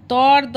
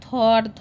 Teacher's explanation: এর মধ্যে অঘোষ হচ্ছে ত আর থ, আর ঘোষ হচ্ছে দ আর ধ। আর ত আর দ হচ্ছে অল্প প্রাণ, থ আর ধ হচ্ছে মহাপ্রাণ।